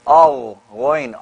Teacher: You can feel the vibration in the top halaq, right? Yeah, above the Adam's apple.